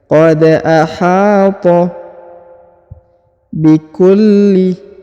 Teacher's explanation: huruf lam memiliki tanda tasdid atau penekanan, maka ditahan dan ditekan